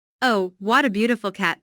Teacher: What a is an expression that means I think this is a very what a n is followed by an adjective which is usually emphasized. Notice the emphasis on beautiful here.